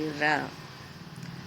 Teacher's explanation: जब मुख द्वार जिह्वा के अग्रभाग से 2-3 बार शीघ्र से खुलता और बंद होता है, उस समय उच्चारण होने वाली ध्वनि लुंठित ध्वनि होती है। यह ध्वनि है र।